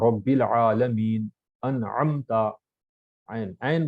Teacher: ऐन हा दरमियानी हलक से